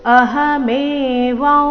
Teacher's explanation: ಅಹಮೇವಂ ಅನುಸ್ವಾರದ ಉಚ್ಚಾರಣೆ ನಾಸಿಕಾ ವ ರೀತಿ ಬರಬೇಕು.